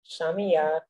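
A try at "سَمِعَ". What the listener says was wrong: হ্যাঁ, সিনের উচ্চারণ শিনের মতো হয়ে গেল কিন্তু। সা, সা তো না, সা, সা সি সু। একটা তো হলো 3 নুক্তাওয়ালা, সা, সা, সা, সা, সা, সামিআ।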